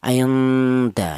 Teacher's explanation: Karena nun mati ini berjumpa dengan huruf dal, di mana huruf dal ini termasuk hurufnya ikhfa. Jadi cara bacanya nun mati ini disamarkan atau dibaca ikhfa. Ainda ya, ada dengunnya dua harokat.